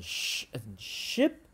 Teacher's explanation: this is when we pull our tongue up and back with rounded lips our tongue is right up again right near the roof of our mouth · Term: palatal